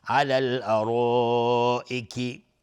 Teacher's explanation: على الارائک مد واجب متصل به مقدار 4 تا 5 حرکت وجوباً مد میخواد